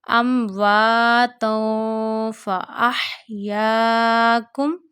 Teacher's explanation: we are taking tanween sound into the nose and we are stretching the voice of tanween. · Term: ikhfa